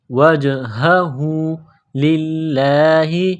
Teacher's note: لفظ اللہ کے نام کو باریک کرنا ہے